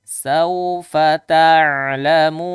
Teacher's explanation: Nah, di sini lihat sawfa ta'lamun. Ada lin, sawfa itu lin. Waw sukun sebelum fathah. Lembut. Bacanya ringan saja.